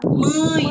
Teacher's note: O E sai bem mais rápido, né? A gente fala o E bem mais rápido. E o A a gente fala mais forte, demora um pouquinho mais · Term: semivogal